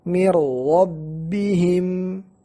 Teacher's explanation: Nun sakinah seperti masuk ke dalam ra, dan ra yang kedua menjadi musyaddad, ra yang setelah nun sakinah. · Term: idgham